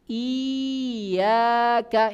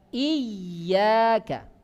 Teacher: Ya-nya tadi kalau bertasydid harus dilebihkan tekanannya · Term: ya bertasydid